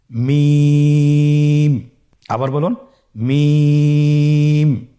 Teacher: হ্যা দুই ঠোট চেপে ধরে আমরা উচ্চারণ করব।